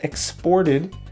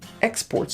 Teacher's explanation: all right so here we have a verb and a noun when it's a verb the the stress is on the second syllable · When it's a verb, the stress is on the second syllable, exported. And here when it's a noun, the stress is on the first syllable, export.